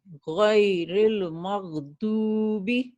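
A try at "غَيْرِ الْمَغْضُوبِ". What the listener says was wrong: yes very good.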